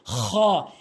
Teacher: খ হলকের শেষ থেকে খ হরফটি উচ্চারণ করতে হবে।